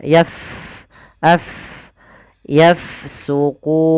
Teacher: huruf Fa di sukun maka kita alirkan nafasnya